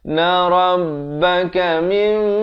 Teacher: Sekali lagi iqlab di sini 2 harakat, ditukarkan bunyi nun kepada mim.